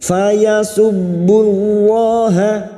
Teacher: lam jalalah yang didahului dumah kita baca tafkim